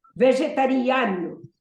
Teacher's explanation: In English, we say vegetarian, and there's no real rule to the pronunciation. But here, the stress is on vegetariano. The fifth syllable.